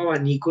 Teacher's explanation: Yo digo abanico, entonces utilizo un alófono o una variante fonética que es la beta, porque está entre dos vocales